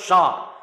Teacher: आप बोल के देखो एस तो एस में क्या होगा आपके अंदर से थोड़ी सी ऊष्मा बाहर आएगी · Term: उष्मा व्यंजन